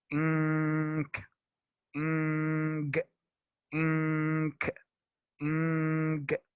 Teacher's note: these sounds, we call them like nasal sounds because the nose is like the part that we use to pronounce these sounds